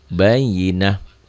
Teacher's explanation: Ta marbutoh itu Kalau berhenti bunyinya jadi ha